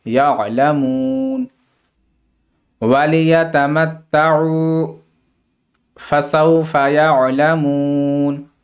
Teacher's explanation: وقف کرنے کی صورت میں نون پر زبر نہیں پڑھا جائے گا